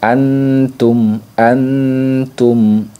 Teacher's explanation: bunyi Nun sukunnya itu cenderung lebih jelas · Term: Ikfa akrab